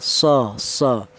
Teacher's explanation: shad ini keluarnya huruf berasal dari ujung lidah menyentuh pangkal gigi seri bawah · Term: huruf shad